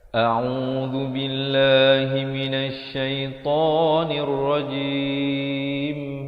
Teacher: Yang betulnya a dan u. A'u dua harakat, zu di hujung lidah. Bila lafz jalalah dibaca nipis dua harakat.